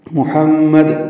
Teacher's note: محمد وقف کریں گے، دال ساکن ہو جائے گی، میم مشدد پہ غنہ ہوگا، دال ساکن پہ قلقلہ ہوگا۔